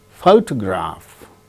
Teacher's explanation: in the case of the word photograph the first syllable gains stress